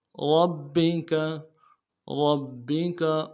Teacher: را کو موٹا ادا کرنا ہے، با کے ساتھ ملانا ہے، با کے اوپر تشدید زور دیں گے